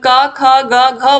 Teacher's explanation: और जब हम का ख ग घ बोलते हैं तो हमारे गले से आवाज आती है, इसीलिए इसका कंठ है उच्चारण स्थान